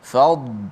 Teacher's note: dad mati, jangan bunyi qalqalah. Fad tebal tapi tanpa qalqalah.